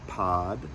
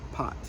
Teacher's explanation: if you change that T to a D, you get a long alpha